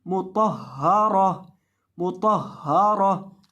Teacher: वक़फ़ की हालत में गोल ता को साकिन हा से बदल देंगे।